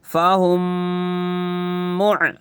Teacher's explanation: یہاں پہ بھی دیکھنا قاعدہ، میم ساکن ہے، میم کے اوپر جزم رہے تو میم ساکن، میم ساکن کے بعد میم آیا ہے تو گنہ اکفا کے ساتھ ملا کے پڑھنا ہے